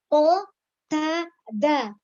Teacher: Jadi ujung lidah menyentuh ke pangkal gigi seri atas ada 3 huruf, yaitu huruf po, huruf dal, dan huruf ta.